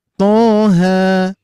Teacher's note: Tha cukup dua harakat